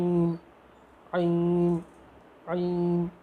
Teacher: عین، عین، عین کے اندر تھوڑا زور دیں گے، عین گلے کے بیچ والا جو حصہ ہے وہاں سے نکلتا ہے